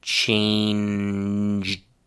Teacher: a lot of voiced consonants one after the other at the end of the word. You have n then duh then duh again.